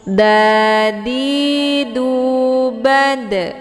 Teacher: Nah, huruf dal ini dia tempat keluarnya dari ujung lidah da, kemudian ujung lidahnya itu ditempelkan ke akar dua gigi seri bagian atas atau tempat tumbuh gigi.